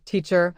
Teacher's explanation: teacher has stress on the first syllable